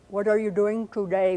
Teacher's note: What are you doing today would be how that sentence would sound if I were making all of my T's retroflex.